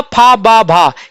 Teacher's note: पा वर्ग का उच्चारण कहां से होता है? ओष्ठ से होता है।